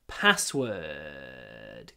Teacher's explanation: So try to pronounce word in, I call it, croaky voice. Don't use your full voice when you say word.